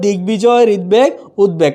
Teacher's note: বফলা যখন গ এবং দ এর সাথে যুক্ত হচ্ছে তখন এর উচ্চারণ কি থাকছে? স্বতন্ত্র থেকে যাচ্ছে। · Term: বয়ের উচ্চারণ স্বতন্ত্র